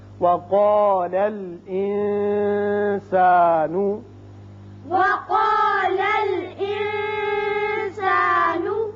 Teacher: قاف پر ہوگا نون پر اخفا کریں گے